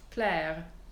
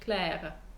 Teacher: In French, it would be pronounced Claire. In spoken French, you can hear I do that uvular R. There's the tiniest bit of a little bit of a vowel called a shadow vowel in diction and in sung diction, which tells you that I have spoken a consonant.